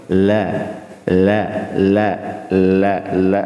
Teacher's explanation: lam itu di ujung lidah dengan langit-langit di bawahnya